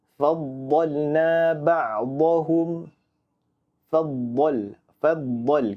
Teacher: Kita tidak boleh baca huruf dha dengan bacaan yang tipis. Kalau tipis, dah jadi huruf dal. Faddal. Di sini kita harus membacanya dengan bacaan yang tebal.